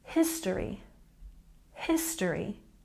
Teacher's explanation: we've got stress on the first syllable, history, history.